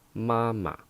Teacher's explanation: the second one we just use the neutral tone so it becomes mama